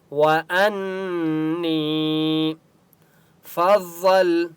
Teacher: علیکم وَأَنِّي فَضَّلْتُكُمْ، وَأَن، نون کے اوپر تشدید ہے اس لیے یہاں پر غنہ ہوگا۔ نی، یا مدہ ہے، نون کو 1 الف کی مقدار کھینچ کر پڑھیں گے۔